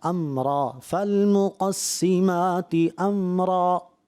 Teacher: را کو آپ نے واضح پر کرنا ہے